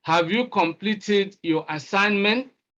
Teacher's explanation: Rising tone. That indicates we are asking a yes or no question.